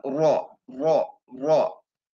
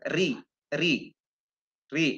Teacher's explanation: kalau yang rok tebal itu eh lidahnya langsung ditumpukan work work work tebal tetapi ketika kasrah RI di tumpu disentuhkan saja sedikit ujung lidahnya Ri Ri free perbedaannya seperti itu untuk cara membaca huruf ro